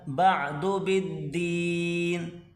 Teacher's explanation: عین کو گلے سے نکالیں